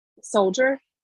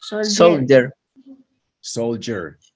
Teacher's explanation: esta combinación, la D con la I y la D con la U, muy comúnmente suenan como una Y de yuca